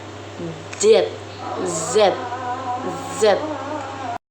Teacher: Huruf Z dibentuk dengan menggunakan lidah dan gigi atas serta menghasilkan suara yang gesekan. Contoh frikatif alveolar.